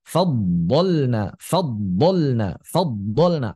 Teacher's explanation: Fadhalna, fadhalna, fadhalna, atau yang diistilahkan dengan dhad ta'iyah, dhad yang telah hampir berubah menjadi huruf ta. Ya, ini kalau menurut Al-Imam Ibnu Ghanim Al-Maqdisi, ini dhad yang enggak fasih.